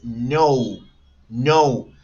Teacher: O U, en este caso, una combinación de dos vocales cerradas.